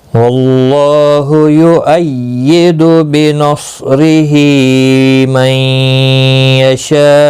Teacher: اب حمزہ جب ساکن ہوگا تو اس کو 5 الف کی مقدار کے برابر کھینچ کر وقف کرنا ہوگا۔ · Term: مد متصل